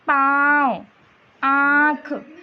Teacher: जब हम अनुनासिक शब्द का उच्चारण करते हैं तो हमारे मुंह के साथ साथ नाक को भी छूकर ध्वनि निकलती है। ठीक है, जैसे हम बोलेंगे पाँव, आँख, तो देखिए ना से भी उच्चारण हो रहा है ना, तो ऐसी शब्दों को अनुनासिक बोलते हैं।